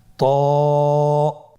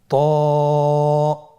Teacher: জিহ্বার আগা, সামনের উপরের 2 দাঁতের গোড়ার সঙ্গে লাগিয়ে উচ্চারিত হয়।